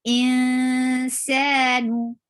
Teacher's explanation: Whenever you find noon with sakun and there is a ikhfa letter coming up, then you will change and you will hide the sound of noon and you will keep it in your nose and you will go towards the makhraj of the letter coming up. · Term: light ikhfa